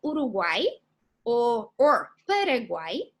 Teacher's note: And for example, we can have a word like Uruguay or Paraguay, names of countries, which in this case, they are triphthongs, means that we're going to have 3 vowels together in the same syllable